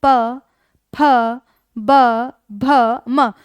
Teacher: जब दोनों होठ एक साथ मिलेंगे तब ही इनका उच्चारण किया जा सकता है। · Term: द्वयोष्ठ्य व्यंजन